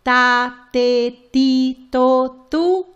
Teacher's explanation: the letter T do not release the puff of air · put your tongue a little forward when you uh articulate it and that will prevent that puff of air